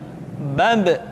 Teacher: Ketika mati, maka terdengar suara pantulan.